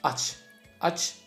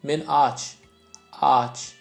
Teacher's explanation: When you say open, the verb open, aç. Aç, it's short A. When you say I'm hungry, like hungry, men aç. Aç, it's long A. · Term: long and short vowels